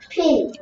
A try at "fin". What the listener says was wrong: 이거 똑같아? pin. fin. 자, p하고 f하고 구분할 줄 알아야 돼. p는 p니까 f는 f니까 윗니가 아래 입술을 스치는 거야. 그래서 얘는 fin. fin. fin. fin. 얘는 pin.